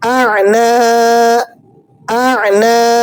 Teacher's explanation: عین کو آپ نے وسط حلق سے ذرا زور کے ساتھ ادا کرنا ہے۔ حمزہ عین زبر آ، نون الف زبر نا، اعنا، اعنا۔